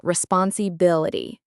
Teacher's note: Put the stress on the bil.